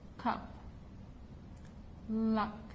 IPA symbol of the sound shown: ʌ